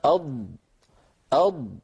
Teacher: والهواء الخارج من الرئة من هنا يضغط على اللسان لأنه قوة ضاغطة، فتحت تأثير هذه القوة الضاغطة يندفع اللسان قليلا إلى الأمام مليمترات بسيطة إلى أن يلامس رأسه منطقة التقاء اللحم بالأسنان من الداخل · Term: استطالة